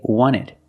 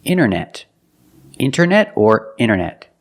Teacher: when you see NT a lot of times you don't hear the T